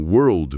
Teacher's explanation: Mas em world, mundo, a língua precisa fazer uma ginástica e ir até o céu da boca pro L antes de soltar o D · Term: L retroflexo